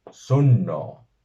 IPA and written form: 'su.nːoː (SUNNŌ)